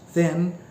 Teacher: the air that flows through the little opening make friction noise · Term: fricative sounds